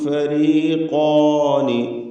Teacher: ഖാഫിനും അതിൻ്റെ ദീർഘാക്ഷരമായ അലിഫിനും തഫ്ഖീം കൊടുക്കണം, തടിപ്പിച്ച് പറയണം. ഇസ്തിഅലാൻ്റെ അക്ഷരമാണ് ഖാഫ്.